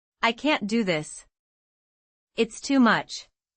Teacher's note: The stress on can't is very strong and too much is spoken quickly almost as one unit.